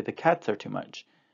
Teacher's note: it is the voiceless s because the consonant that comes before it is a t